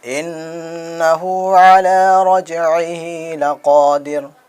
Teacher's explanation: بڑی قاف ہے، ان کو حلق سے قاف کو نکالنا ہے۔